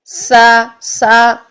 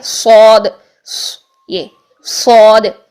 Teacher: سین اور زا میں باریک سیٹی ہوتی ہے اور صاد میں جو ہے وہ موٹی سیٹی ہوتی ہے